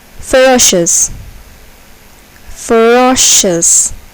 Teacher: here the second syllable is accented